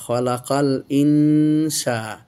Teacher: খ জবর খ, লাম জবর লা, খালা, কাপ লাম জবর কাল, খালাকাল, হামজা নুন ইন, সিন আলিফ জবর সা, খালাকাল ইনসা, কেননা নুন সাকিনের পর সিন এসে ইখফা করতে হবে।